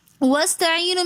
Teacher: وَاسْتَعِينُ میں ہم واو کو سین کے ساتھ ملا کر پڑھیں گے. درمیان میں حمزۃ الوصل ہے جو کہ درمیانی کلام میں آنے کی وجہ سے گر جاتا ہے